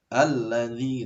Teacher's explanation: Ketika tasdid, pokoknya ketika tasdid itu harus dinaikkan sedikit suara. Kayak ada tekanan gitu ya.